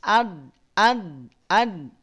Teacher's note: Tidak ad. Kalau dibaca demikian, tidak dinaikin pangkal lidahnya, akan terdengar tipis. Ad. Tapi naik pangkal lidahnya.